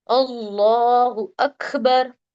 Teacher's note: اکبر میں کاف پہ کیا ہو رہا ہے؟ ہمس ہو رہا ہے